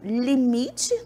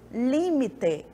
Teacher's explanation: no limite, a minha sílaba tônica está no mi e no espanhol está no li